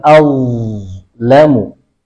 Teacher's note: Perhatikan, azlamu, ada getaran di tenggorokan.